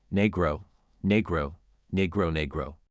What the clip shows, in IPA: ˈniː.ɡroʊ